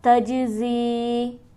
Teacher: تج کے جیم پر ہمارے پاس حرف قلقلہ ہے لہٰذا یہاں پر آواز اچھلتی ہوئی معلوم ہوگی